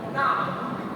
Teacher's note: hendaknya kita mengeluarkan huruf ain tersebut sesuai dari makhrajnya, yaitu dari dalam pangkal tenggorokan